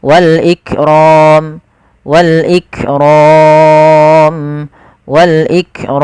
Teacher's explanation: Panjang untuk mad arif l sukun sendiri itu kita boleh memanjangkan dua harakat, boleh empat harakat, boleh pula enam harakat.